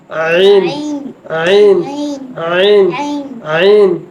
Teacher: এটা হচ্ছে হলকের মাঝখান থেকে